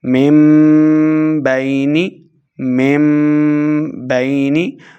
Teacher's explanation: نون ساکن کے بعد حرف با ہے تو ہم نے نون ساکن کو میم سے بدل کر پڑھنا ہے . یہ چھوٹا میم یہاں پہ لکھا گیا ہے پڑھیں گے